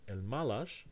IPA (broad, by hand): elmalaʃ